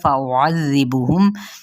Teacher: فا اور حمزہ کی پیش کو لمبا نہیں کریں گے